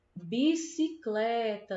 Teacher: Tá claro que é o clé, né? E o clé é a penúltima sílaba da palavra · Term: paroxítona